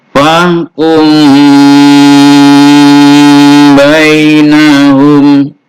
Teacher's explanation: Jadi suara mim itu tidak dibaca jelas, tapi dia dibaca samar-samar. Jadi tidak ditutup suara mimnya. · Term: ikhfa syafawi